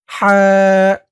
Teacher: হা উচ্চারণ গলার ভেতর থেকে চিকুন হয়ে বের হবে